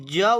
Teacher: option A ज वर्ण जो है स्पर्श संघर्षी है